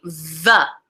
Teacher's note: So the tongue touches the teeth, usually just behind the front teeth. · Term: dental fricatives